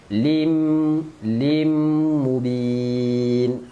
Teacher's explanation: Tanwin masukkan ke dalam mim dan dengung.